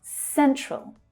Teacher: The first syllable there is stressed.